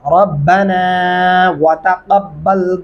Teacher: واؤ پڑھتے ہوئے اپ کے ہونٹ گول ہونے چاہیے